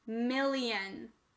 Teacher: this word read mill read lion read the whole word million there's a schwa here it changed from i to uh